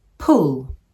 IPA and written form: pʊl (pull)